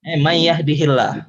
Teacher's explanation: diidghamkan, itu konsekuensi dari huruf nun bertemu ya-nya